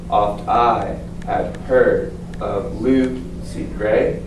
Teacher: Notice how I heard blue sea gray. They're stressed. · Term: iambic pentameter